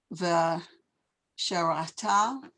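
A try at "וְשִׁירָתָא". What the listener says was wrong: Shirata. You have to hear that E. Vishirata.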